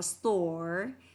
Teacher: không phải là âm o ngắn mà nó là o dài trong tiếng Anh, và đặc biệt là cô đang theo American English.